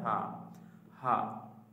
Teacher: স্বাভাবিকভাবে হলকের শেষ ভাগ হইতে উচ্চারিত হয় হা।